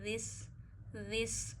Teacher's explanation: दिस ज़ाल भी वहीं से अदा होता है जहाँ से सा अदा होता है, यानी ज़बान की नोक के ऊपर वाला हिस्सा, जो ज़बान का सिरा है वो आपने ऊपर वाले दांतों के एंड पे अंदरूनी किनारों पे टच करके ज़ाल पढ़ना है